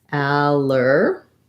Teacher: So we have the ah sound, and then we have our letters ER do say the sound. It's an unstressed and short but I still have to make the tight back American R.